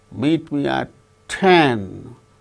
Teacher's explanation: 10 is the tonic syllable, or which gains more importance than meet.